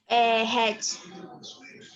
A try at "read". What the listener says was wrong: Read. Read, isso. Se não, se você falar had, parece que fica igual ao passado de have, né? Have, had, read, read.